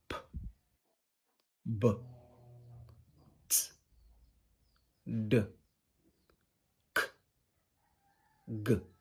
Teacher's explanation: Plusives or stops are consonant sounds that when producing or creating the airflow is blocked completely then suddenly released with a sharp burst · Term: Plosives or stops